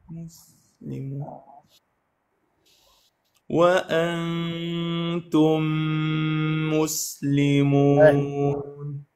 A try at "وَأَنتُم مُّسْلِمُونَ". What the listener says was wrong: أحسنت الآن.